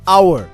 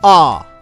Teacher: in the word hour, the H is silent. It begins with a vowel sound ah.